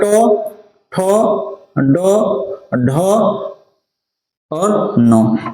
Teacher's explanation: इसको मूर्धांत न बोलते हैं मतलब मूर्धा से बोला जाता है न